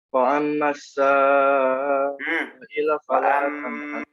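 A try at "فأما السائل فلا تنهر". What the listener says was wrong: Mim tasdidnya jangan lupa.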